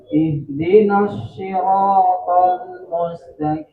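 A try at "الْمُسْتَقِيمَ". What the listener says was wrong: Agak tebal lagi. Qi. Jangan ki itu jadi kaf. Mustaqi.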